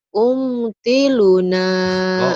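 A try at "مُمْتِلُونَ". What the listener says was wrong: Kok kok itu kan mim, Neng. Mim. Mim itu mah. Kok tiruna. Mom. Mom tiruna.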